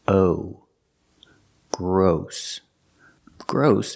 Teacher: it's spelled with OSS but it has a different pronunciation we're using the long o like no and go